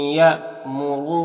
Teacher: یہاں پر حمزہ ساکنہ جھٹکا لگے گا